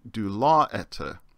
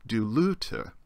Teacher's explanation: the short Omicron and that short epsilon combine to form the diphthong